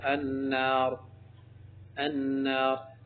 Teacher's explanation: اب را پر پڑھیں کیونکہ اس سے پہلے زبر ہے